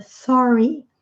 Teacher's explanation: R com a língua enrolada.